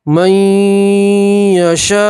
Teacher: نون سکین کا یا کے اندر ادغام کریں گے اور ایک الف کے برابر گنہ کریں گے. نون نہیں پڑھیں گے، میم کو یا سے ملائیں گے. · مد متصل ہے تو 4 الف کے برابر مد کو کھینچیں گے